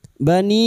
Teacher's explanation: Bani bertemunya mad dengan hamzah. Di lain kalimat mad jaiz munfasil. Lima harakat kita panjangkan